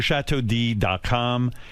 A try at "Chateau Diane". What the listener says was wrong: Why are you saying D and it's Diane?